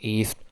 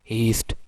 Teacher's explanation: Usually a glottal stop occurs at the beginning of words before vowels in American English